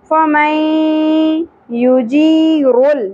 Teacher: یہاں پر لا کا نشان آپ کو نظر آ رہا ہے، اس لیے یہاں پر بریک نہیں کر سکتے۔ فَمَن، نون ساکن کے بعد یا، ادغام مع الغنہ